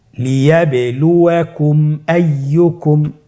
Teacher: মিম সাকিনের পরে যদি মিম এবং বা ছাড়া বাকি যতগুলো হরফ আছে আরবি সবগুলো হরফের যে কোনো একটি হরফ আসলে মিম সাকিনকে গুণনা ছাড়া স্পষ্ট করে পড়তে হবে। মিম সাকিনকে স্পষ্ট করে গুণনা ছাড়া পড়তে হবে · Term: ইজহারে শাফাউই